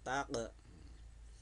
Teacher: mantul karena huruf qaf berharokat sukun ya. Jadi dipantulkan tak. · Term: qalqalah sugro